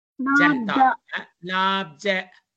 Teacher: That ja should be from the tip of the tongue, not so emphatic.